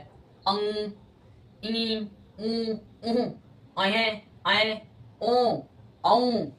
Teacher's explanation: अब अनुनासिक की अगर बात करेंगे तो बोलते समय ध्यान रखना है कि मुंह से तो निकलेगा, उसका आधा हिस्सा नाक से भी निकलेगा